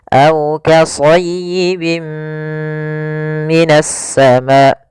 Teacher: amun yaitu ditandai dengan dengan adanya tanwin bertemu dengan huruf mim cara membacanya masukkan tanwin ke huruf mim dan ditahan gunahnya Nah di sini kita namakan juga dengan idgam naqis aibim minasama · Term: idgham bi gunnah